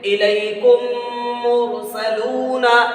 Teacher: ہمارے سامنے لکھا ہوا ادغام شفوی، ادغام شفوی، میم ساکن کے بعد میں میم آئے، میم ساکن کے بعد میں میم آئے تو ادغام شفوی ہوتا ہے۔ پہلی میم کو دوسری میم سے ملا کر غنہ کے ساتھ پڑھیں گے، پہلی میم کو دوسری میم سے ملا کر غنہ کے ساتھ پڑھیں گے، جیسے الیکم مرسلون، ٹھیک ہے، پہلی میم کو دوسری میم سے ملا رہے ہیں تو جب ملائیں گے تو دونوں میں غنہ ہوگا۔